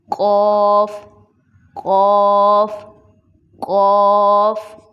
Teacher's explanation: موٹے قوف میں ہماری زبان نرم تالو سے ٹچ ہو رہی تھی لیکن باریک قاف میں ہماری زبان سخت تالو کو ٹچ کرتی